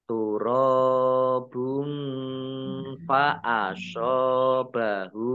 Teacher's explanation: Alaihi turobun, rok fathah alif mat tobi'i panjang 2 harokat. Kemudian domah tanwin bertemu dengan huruf fa, bacaan ikhfa dibaca samar-samar.